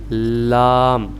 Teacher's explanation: تو لام ہم اس کو ایک تو ناک میں نہیں پڑھیں گے, اسے لام پڑھیں گے, یعنی کہ صرف منہ سے آواز, ناک میں اس کی وائس نہیں جانی چاہیے. زبان کا جو نوک ہے ہم اس کو ملائیں گے اوپر تالو کے سخت والے حصے سے, تب اس کی ادائیگی آسانی اور صحیح معنی میں ہوگی, لام.